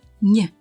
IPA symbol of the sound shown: ɲ